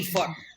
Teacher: So you would pronounce the R, but not the T.